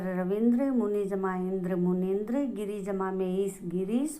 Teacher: इस प्रकार से दोनों ई मिलकर दीर्घ ई बन जाती है